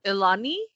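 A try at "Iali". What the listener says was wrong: There's no N. I would probably say Eli. How my name starts. I'm going to say it how my name starts.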